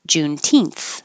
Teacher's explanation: The stress is on the teenth.